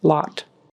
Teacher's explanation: Make sure your mouth opens tall for the ah sound. It's a short O, ah, and not O, long O for lot.